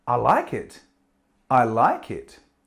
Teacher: Okay, again, we're rising intonation to show our approval.